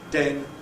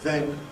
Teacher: the difference between [d] and [ð], to know that ‘den’ [den] and ‘then’ [ðen] are different words in English